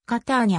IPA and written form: kaˈtanja (Catania)